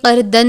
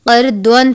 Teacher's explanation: دعاد کو دال کی طرح نہیں پڑھیں گے، قردن نہیں پڑھیں گے، قردون پڑھیں گے، پر کر کے پڑھیں گے، کیونکہ یہ حروف مستعلیہ میں سے ہے